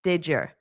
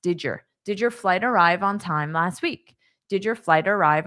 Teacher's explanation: So dy combination phonetically forms a J. That's why you may have heard me say j, did your, because that's just natural.